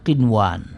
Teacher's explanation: dibaca dengan izhar sehingga nunnya akan dibaca dengan jelas